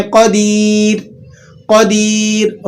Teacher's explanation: را ساکن، ماقبل میں یا ساکن آ گئی تو آپ نے اس کو را کو باریک کر کے ادا کرنا ہے۔ ایسا بھی عموماً وقف کی حالت میں ہوتا ہے۔